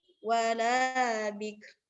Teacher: Kafnya dibaca tapi ro-nya juga ikut dibaca, tapi hanya samar. Kaf dan ro-nya hanya terdengar sedikit.